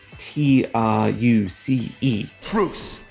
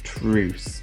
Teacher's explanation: he does a definite TR rather than a CH. So rather than truce, he does a definite truce, which requires a lot more kind of tongue tip specificity when you do tr versus truce.